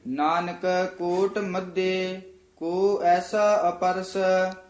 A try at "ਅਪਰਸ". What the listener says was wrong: ਇਹਨੂੰ ਅਪਰਸ ਨਹੀਂ ਕਹਿਣਾ, ਐੜੇ ਦੇ ਵਿੱਚ ਡੈਸ਼ ਦੇ ਕੇ ਬੋਲਣਾ, ਅਪਰਸ।